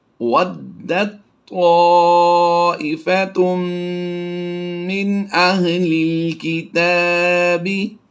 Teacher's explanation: تا کو ہم طا میں مدغم کر دیں گے، اس میں ضم ہو جائے گی اس کی آواز